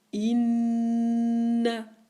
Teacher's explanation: le noun avec shadda, mim avec shadda, je maintiens le son plus que toutes les autres lettres avec la shadda